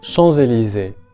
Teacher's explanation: we have the liaison. Therefore, the letter S in champs is pronounced and it becomes Z.